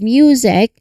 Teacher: the M sound which is made with your lips closed and sound coming through your nose quickly followed by the Y sound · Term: MY cluster